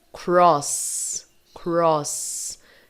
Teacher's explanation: es não tem vibração no k vamos ver aqui Cross Cross percebe que no último som o s deixa de vibrar sua garganta para de vibrar